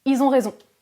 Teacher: Attention, avec le pluriel, si le verbe qui suit commence par une voyelle, le L disparaît, mais on fait quand même la liaison